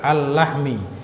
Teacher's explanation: Tasdidnya masuk ke lam yang kedua, al-lahmi. Alif lam masuk ke lam, maka idgham ke lam yang kedua, al-lahmi.